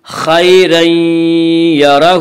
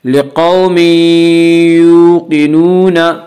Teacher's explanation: یومنو کے چار حرفوں میں سے یا رہا ہے، اس لیے تنوین کو یا سے ملا کر غنہ کے ساتھ پڑھیں گے، اور اس کو ادغام ناقص کہتے ہیں۔